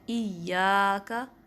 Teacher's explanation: اس مد کو بھی پورا کرنا ہے، یا کا 2 کاؤنٹس، 2 حرکات کے برابر لمبا کرنا ہے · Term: الف مدہ